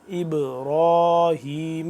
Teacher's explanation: ہا کو حلق کے نچلی سائڈ سے نچلے حصے سے اس کو ہا کو نکالیں گے